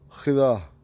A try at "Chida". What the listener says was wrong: But you raise it at the end.